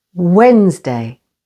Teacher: Wednesday with the stress on the first syllable